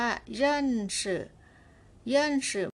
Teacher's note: ในที่นี้ออกเสียงเบาเราก็ไม่ต้องออกสื่อยาวขนาดนั้นแล้วก็เอาแค่ครึ่งเสียงเท่านั้นค่ะ